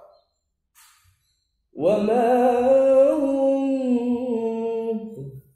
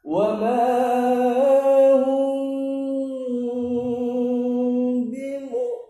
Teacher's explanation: Jadi suara mimnya tidak terlalu jelas karena dia hukumnya ikhfa syafawi, harus samar-samar suara mimnya.